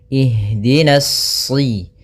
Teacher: Nah, hati-hati jangan sampai kemudian di sini pada lafal na, di sini ada alif lam syamsiyah, yaitu berupa alif yang ditulis tapi tidak dibaca sehingga langsung ke huruf shad